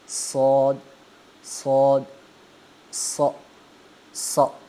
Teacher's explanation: ہاں، اب اس صاد کو پڑھتے وقت بھی منہ مطلب یہ اونچا بھی پڑھنا ہے اور اس کو موٹا بھی پڑھنا ہے، یعنی آپ کا منہ بھرا بھرا ہوا محسوس ہوگا آپ کو۔ صاد۔